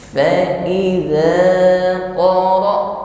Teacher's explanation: Jadi huruf hamzah sukun di sini suara tertahan ya. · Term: asyiddah